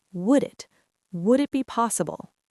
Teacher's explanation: Native speakers will compress this entire block of words into one fluid sound. The D in would links to the I in it.